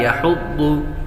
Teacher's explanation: ضاد حروف مستعلیہ میں سے ہے، اس لیے اس کو پر پڑھیں گے۔